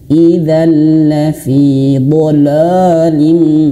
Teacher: Jadi kebanyakan dari kita termasuk saya ya, sebelum belajar tahsin terkadang huruf tebal itu mempengaruhi huruf sesudahnya ya, mempengaruhi huruf sesudahnya. Jangan sampai huruf dhad ini tebal dan huruf lam yang tipis terbawa menjadi tebal.